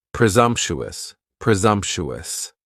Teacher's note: presumptuous has four syllables. And the stress is on that second syllable. And the s almost sounds a little more like a z.